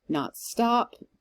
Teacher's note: more emphasis on stop than on not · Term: iambic meter